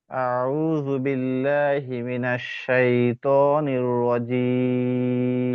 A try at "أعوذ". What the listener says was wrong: আচ্ছা আমি বলি দেখেন আউযু আউ দুইটা কিন্তু আলাদা করা যায় দুইটা কিন্তু আলাদা আলাদা করতে হবে আয়ের মাখরাজ আলাদা আইনের মাখরাজ আলাদা আউযু আউযু বলেন